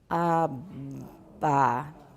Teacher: making sure you have a fully voiced intervocalic stop, and then keep increasing the length of the voicing